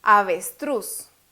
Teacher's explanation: avestruz lleva la sílaba tónica de último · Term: palabra aguda